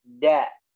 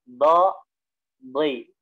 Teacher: Kalau do ya, tepi lidahnya disentuhkan ke gigi geraham, kemudian tebelin suaranya